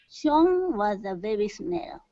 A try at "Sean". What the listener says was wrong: Sean. Instead of Sean, okay, take out the oo sound and go directly to an ah. Sean.